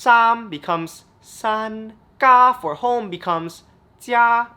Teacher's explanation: Tone 1 in Cantonese, the high and flat tone, becomes the exact same thing in Mandarin.